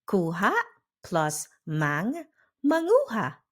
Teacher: Kuha plus mang, manguha. The K disappears. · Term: first consonant